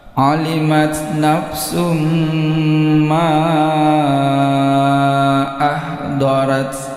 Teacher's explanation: tanda panjang ini bertemu dengan hamzah, ini mad jaiz, 4 ketukan. Ketukan kelima masuk pada a.